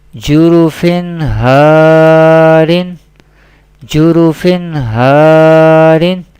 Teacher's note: madda letter we pronounce by stretching up to one alif or two harakat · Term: alif madda